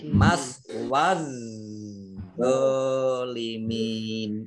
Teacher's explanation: Ini alif lamnya juga alif lam syamsiyah tidak dibaca, langsung masuk ke huruf berikutnya yaitu dha ditandai dengan tasdid. Jadi dha-nya dibaca double.